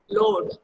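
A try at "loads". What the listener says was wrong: लोड्स, स last में स साउंड है, लोड्स।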